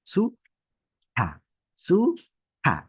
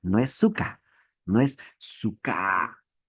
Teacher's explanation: Esta KH es una consonante expirada o aspirada, que se pronuncia de adentro hacia afuera, como soplando, como si nosotros estaríamos expulsando o botando algo.